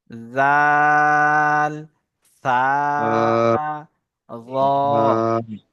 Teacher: জিভের আগা এবং উপরের সামনের দাঁতের আগার সাথে লেগে উচ্চারণ হয়